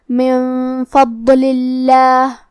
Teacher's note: فا حروف الاخفاء میں سے ہے تو ہمیں یہ حکم کو غنہ کے ساتھ ادا کرنا ہے